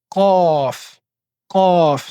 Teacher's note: c'est l'arrière de la langue qui va taper l'arrière du palais. On appelle ça le palais mou. Donc tout dans le fond également en levant l'arrière de la langue donc forcément car cela fait partie des lettres qui sont en fatigue. · Ensuite, la lettre Qaf qui n'existe pas également dans la langue française. Pour prononcer la lettre Qaf, nous devons mettre l'arrière de la langue en contact avec le palais mou qui est au fond de la gorge.